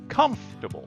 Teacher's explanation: when you say this word stress the first syllable